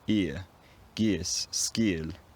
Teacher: the goose vowel somehow ended up fronted, so pronounced at the front of the mouth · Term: fronting